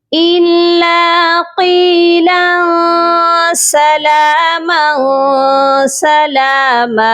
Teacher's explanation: میم کو ہم ایک الف کی مقدار لمبا کر کے پھر سٹاپ کریں گے